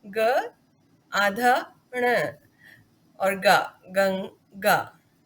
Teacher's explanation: ग व्यंजन क्योंकि क वर्ग में क, ख, ग यहाँ पर आता है और इस वर्ग का पंचम अक्षर ण है, इसलिए गंगा शब्द में इस अनुस्वार का अर्थ इस ण से है।